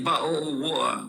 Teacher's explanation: I say bottle of water without the T sound